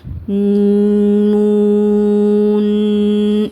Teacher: குண்ணாவை அதிகமா கொடுத்து ஓதுவாங்க